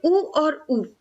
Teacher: ऊ और ऊ बोलेंगे तो देखिए दोनों होंठ आपके सिकुड़ जाएंगे, छोटा सा मुंह बन जाएगा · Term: ओष्ठ